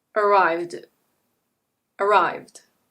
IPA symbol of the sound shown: d